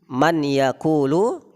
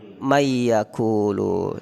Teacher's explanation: nun sukun bertemu dengan ya. Man yaqulu, aslinya man yaqulu, kemudian dibaca mayyaqulu. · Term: idgham bi gunnah